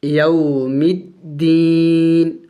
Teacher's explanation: وقف میں نون کو سائلنٹ کر دیں گے، یعنی ساکن کر دیں گے اس کو